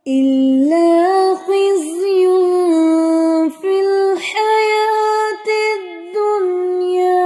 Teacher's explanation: इख्फा की सही से अदायगी करें, नून की आवाज को छुपाना है। खिज़्युन फिल हयातिद दुनिया, जा को हिलाना नहीं है, खिज़्युन नहीं पढ़ेंगे, उसको जमाओ से पढ़ना है।